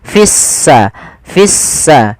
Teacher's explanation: Artinya lamnya dianggap tidak ada, sehingga langsung diidghamkan ke huruf sin, sehingga sinnya berharokat tasdid, seakan-akan s-nya dua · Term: alif lam syamsiyah, Alif lam syamsiyah